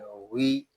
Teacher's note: یہ غین حروف مستعلیہ میں سے ہے، اس کو پر پڑھیں گے۔